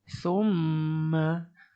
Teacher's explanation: Didengungkan pada huruf mim yang bertanda syaddah ini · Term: mim syaddah